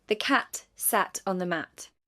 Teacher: Tap on cat and mat. The other words are said quickly. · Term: sentence stress